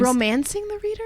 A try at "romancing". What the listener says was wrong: Oh, you put the wrong accent on the wrong syllable there.